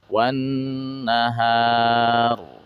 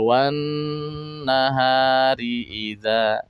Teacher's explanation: Wan nahar tebal. Tapi kalau di wasol wan nahari idza, nah itu tipis.